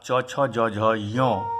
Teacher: चवर्ग, यकार और तालव्य श इनका तालु स्थान है। अब इकार, चवर्ग अर्थात च, छ, ज, झ, य, यकार और तालव्य स इनके उच्चारण में तालु का विशेष प्रयोग होता है, अतः इसका तालु स्थान है।